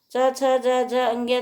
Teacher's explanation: चा से तालव्य व्यंजन, ये क्या है? तालु से बोले जाने वाले